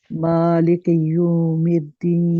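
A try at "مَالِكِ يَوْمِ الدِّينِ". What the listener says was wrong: یا کو یوم نہیں ہے یو کیوں ہے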